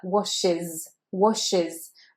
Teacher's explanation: that S sound is said as Z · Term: Z sound